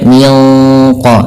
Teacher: Nah, ketika kita melafalkan juga ikhfa yang kepada huruf qf itu ditebalkan menyesuaikan dengan sifat huruf qofnya yang tebal, maka tidak baca min qobli tapi dia minq langsung seakan-akan kita melafalkan huruf qof-nya. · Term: ikhfa hakiki